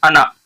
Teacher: لفظ انا جہاں آتا ہے وہاں کھینچنا نہیں چاہیے، وہاں جلدی پڑھنا چاہیے. تو یہاں انا، انا لکھا ہوا ہے اس کو جلدی سے پڑھیں گے.